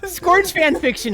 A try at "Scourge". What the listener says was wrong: Number two, the fact that you pronounce Scourge with a Q-U. Scourge. Somehow you put a Q in his name.